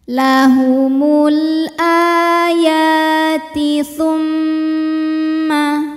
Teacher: Maka kita baca mimnya berdengung, bunyi M-nya tahan sampai ada suara masuk hidung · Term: gunnah musyaddadah